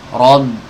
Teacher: Rob, ini tebal nih, ba-nya ikut tebal. Harusnya ba-nya tipis, ro-nya tebal, ba-nya tipis.